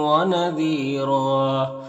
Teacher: یہاں پر را کو پر پڑھیں گے، دو زبر ہے تو ایک زبر کے ساتھ الف پڑھیں گے وقف کی صورت میں